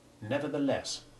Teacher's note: the stressed ending of nevertheless has short e1 as does the equally strongly stressed first syllable